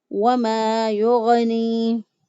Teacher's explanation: واو کی ادائیگی میں ہونٹوں کو گول کیا